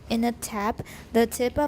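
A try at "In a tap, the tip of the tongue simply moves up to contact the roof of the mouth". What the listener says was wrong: That's good, but slow down because these are keywords. Whenever you've got keywords, make them long and pause, okay?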